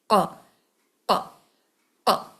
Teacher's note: آپ کی زبان کا پچھلا حصہ آپ کے سافٹ پیلیٹ کے ساتھ ٹکرا رہا ہے، وہاں ہٹ کر رہا ہے، تب قاف کی ادائیگی ہو پا رہی ہے.